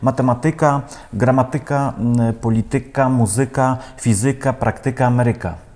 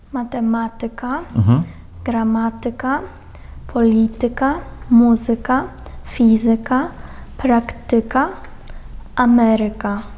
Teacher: Насправді там акцент у цих наголос у цих словах вони у більшості грецького походження падає на третю від кінця. Якщо рахувати склади, то на третій склад від кінця падає.